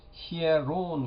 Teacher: 예를 들어서 히에론 같은 경우에는 이것도 모음이지만은 이게 닫힌 모음이고 이게 열린 모음이기 때문에 이오타와 엡실론은 이 에라는 이중모음이 되지 못하고 언제나 이와 에 두 음절로 읽힌다는 것입니다